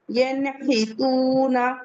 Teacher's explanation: واو مدہ ہے، 2 کاؤنٹ الانگیٹ کریں گے، ینحتون من غیرہ، نون ساکن کے بعد غین آیا ہوا ہے، من غیرہ، کسرہ مستقیمہ، مد حکمی، 2 کاؤنٹ پڑھیں گے۔